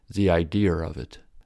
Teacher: british sometimes use the r sound to connect two vowel sounds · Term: intrusive r, intrusive R